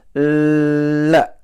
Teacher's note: the tongue, to me, it's like rolled up at the back of the top teeth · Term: L sound